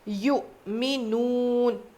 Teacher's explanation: حمزہ کے اوپر جزم ہو تو جھٹکا دے کے پڑھیں گے